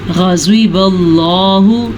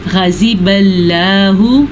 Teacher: ग़ैन को भी पुर पढ़ना है क्योंकि हरूफ मुस्तालिया में से है।